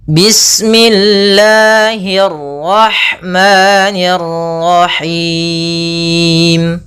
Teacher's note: Panjangnya yaitu kita boleh panjangkan dua harakat, boleh empat harakat, dan boleh pula enam harakat. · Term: mad arid lis sukun